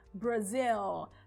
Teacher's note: de u mas no inglês a gente tem que pronunciar SL a língua tem que ir lá para cima para o céu da boca mesmo que seja no final da palavra